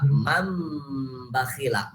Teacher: ya otomatis ini harus dibacanya iklab samar-samar kepada mim. Mim asalnya nih nun mati menghadapi ba, mam bakhila, kayak gitu.